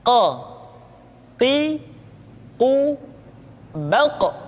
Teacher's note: Berikutnya pengucapan huruf Qa. Huruf Qaf diucapkan dengan cara menyentuhkan pangkal lidah kita dengan langit-langit bagian belakang.